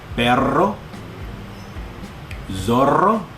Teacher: If there's a double R, as in perro, zorro, those are the Spanish words for dog and fox, then the rolling of the R is also intense.